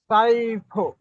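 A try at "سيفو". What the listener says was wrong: সাইফু নয়, ছয়ফু। সদের উপরে জাবারটি হারাকাত, হারাকাত তাড়াতাড়ি হারাকাত তাড়াতাড়ি পড়তে হয়,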